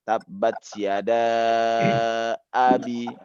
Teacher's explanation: Kalau kita menyebut hamzah ini, kita pasti terputus udara dalam mulut.